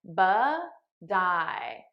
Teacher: So I'm transferring the T sound onto the next word. Now you'll notice I'm saying it as a soft D because that's American pronunciation.